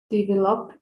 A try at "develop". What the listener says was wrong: Only the stress is more like in the middle, like develop, develop, develop.